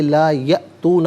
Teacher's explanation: بمثلی ھذا القرآنی، لا علیحدہ یاتون علیحدہ ملا کر پڑھیں گے، لا یاتون، یا پہ آپ دیکھیں حمزہ ساکن ہے، جھٹکے کے ساتھ ادا کیا جائے گا۔